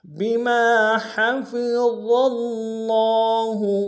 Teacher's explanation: میم کے سالف مدہ ایک انداز میں کھینچیں گے، ہا کو گہرائی سے ادا کریں گے